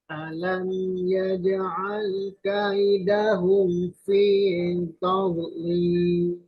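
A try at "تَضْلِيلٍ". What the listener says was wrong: Nah, itu masih ada kol-kolahnya tuh. Tadlil, jangan tadlil. Fi taudlil, taud istitolah ya, bukan kol-kolah.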